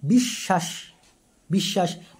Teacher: শব্দের মধ্যে বা শেষে ব ফলা যুক্ত হলে সেই ব্যঞ্জনের দ্বিতীয় উচ্চারণ হয়